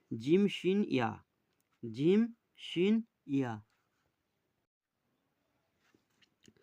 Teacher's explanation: জিভের মাঝখান এবং তার বরাবর ওপরের তালুর সাথে লাগিয়ে উচ্চারিত হয় জিম, শিন, ইয়া।